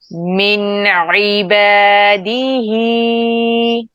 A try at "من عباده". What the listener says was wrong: دے نہیں ہے دی ہے